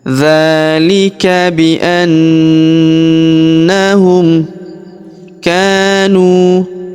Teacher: Huruf ka kita panjangkan dua harakat karena terdapat alif di depannya · Huruf na kita tahan dan kita tekan, serta kita dengungkan 2-3 harokat karena di atas huruf na terdapat tanda tasydid yang ini ya.